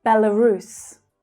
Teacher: The middle syllable is unstressed and it reduces to become the schwa sound.